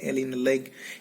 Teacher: L in leg is voiced alveolar lateral, and to articulate these sounds, so the tongue touches the roof of the mouth and passes the air passes aside of the mouth.